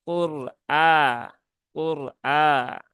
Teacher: ya nah sama juga konsepnya jadi ketika mensukunkan ro itu pangkalnya pangkal lidahnya dinaikkan agar sukun rnya juga menjadi tebal